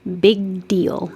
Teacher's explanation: my back of my tongue stops it for the g and then it goes up for the d